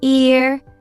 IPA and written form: ɪər (ear)